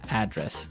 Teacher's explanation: >> Yeah. And there the stress is on the first syllable